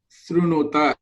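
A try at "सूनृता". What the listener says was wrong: It is the first letter. The first letter is Su. It is not clear.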